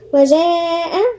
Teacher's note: وجاء هنا في مد متصل 4 حركات